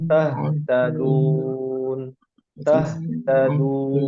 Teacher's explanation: huruf ha itu ada di bagian bawah mahraj tenggorokan al-khalq